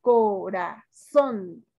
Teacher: Su sílaba tónica es son.